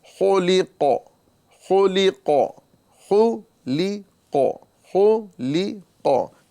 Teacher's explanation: خا کو پر کریں گے، لام کو باریک کریں گے، اور قاف کو پر کریں گے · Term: حروف مستعلیہ